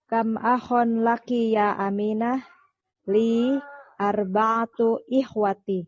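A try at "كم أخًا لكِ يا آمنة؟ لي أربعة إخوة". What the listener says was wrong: Nah, seperti itu Ibu. Barakallahu fiik. Ahsan.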